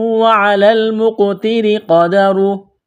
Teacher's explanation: را کے نیچے زیر ہے، را کو باریک کرنا ہے